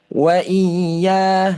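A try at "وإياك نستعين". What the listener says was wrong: Ha tekan tu dekat huruf ya bukan dekat huruf alif hamzah tu.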